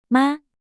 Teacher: First tone stays high, flat, and steady, like singing a high note.